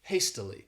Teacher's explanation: This word has 3 syllables, and the stress is on that 1st syllable, hastily.